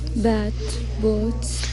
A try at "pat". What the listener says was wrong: No, pa. P. You have to pronounce the P with more air. Pat. It's not bat.